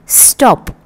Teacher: సో టాప్ అనేది aspirated. అదే స్టాప్ అని మీరు అన్నప్పుడు నోట్లోంచి బయటికి గాలి ఊదం. సో అన్యాస్పిరేటెడ్ అనమాట.